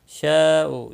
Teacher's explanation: میں، نون ساکن کے بعد یرملون کا یا ہے، ادغام با گنہ ہوگا۔ شاء، یہاں پر مد متصل ہے، 4 الف کے برابر کھینچ کر پڑھیں گے۔